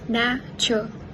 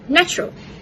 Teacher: in rapid, casual conversation, the word often becomes natural, with the schwa and r sound omitted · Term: elision